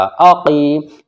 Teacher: हमज़ा ज़बर आ, क़ाफ या ज़ेर क़ी, या साकिन से पहले क़ाफ के नीचे ज़ेर है, इसलिए यहाँ पर या मद्द होगा, यानी या खिंचेगा